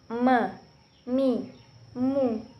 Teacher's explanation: Dikeluarkan dengan cara merapatkan bibir kita.